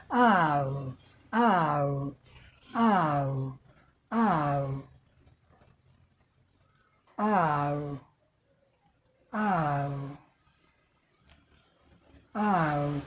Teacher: Lips rounded a little, थोड़ा सा लिप, हमारे लिप दोनों गोले हुए और ये पाउट टाइप का ये आगे बढ़ गया।